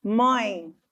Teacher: ele não vai ser pronunciado pela boca mas pelo nariz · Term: ditongo nasal